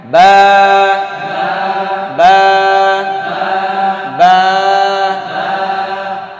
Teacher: দুই ঠোঁট হইতে বা, হ্যাঁ, লাগাইবেন, ছেড়ে দিবেন